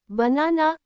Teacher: మొదటి మరియు చివరి భాగాలు తేలికగా పలికబడతాయి. In banana, the middle na has the stress and the first and last parts are pronounced lightly